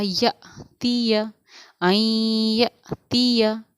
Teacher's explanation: اوپر ساکن ہے، یعنی حمزہ کے اوپر جزم سکون ہے، اور حمزہ ساکنہ کے پڑھنے میں ہمارا ہمیشہ جھٹکا ہوتا ہے